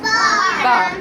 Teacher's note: बा दोनों होठों के तर हिस्से से अदा होता है।